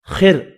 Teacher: خا پر پڑھنا ہے اور را کو باریک پڑھیں گے